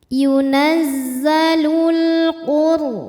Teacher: alif lam menghadapi huruf qamariah yaitu huruf q Q maka cara bacanya alif lam dibaca dengan jelas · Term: alif lam qamariah